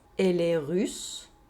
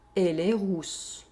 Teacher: Here, we have a difference in oral vowel sound. We have the [y] sound in the first sentence, and the [u] sound in the second sentence.